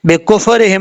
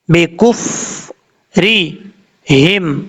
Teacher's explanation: فا میں قلقلہ نہیں کرنا